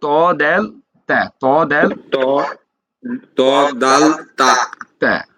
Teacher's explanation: জিহ্বার আগা সামনের উপর 2 দাঁতের গোড়ার সঙ্গে লাগিয়ে উচ্চারিত হয়